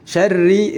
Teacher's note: ri-nya juga dibaca tipis karena dihukumi tarqiq. Tarqiq karena berharokat kasrah.